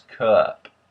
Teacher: the short u sound ah has a bit of an e at the end of it